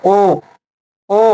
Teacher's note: होठ भी गोल हो रहे हैं। होठ गोल हो रहे हैं। मतलब ओष्ठ का भी इसमें उच्चारण है। · होठ गोल हो रहे हैं मतलब ओष्ठ का भी इसमें उच्चारण है ना, उच्चारण किसका है, होठों का भी उच्चारण है और साथ में कंठ का भी है। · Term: कंठोस्थ, कंठोष्ठ